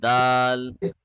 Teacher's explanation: in the letter Dal, the tip of the tongue is touching at the hill.